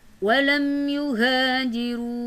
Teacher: ada mim mati bertemu dengan ya, berhukumkan izhar syafawi karena mim mati bertemu dengan ya, maka dibaca jelas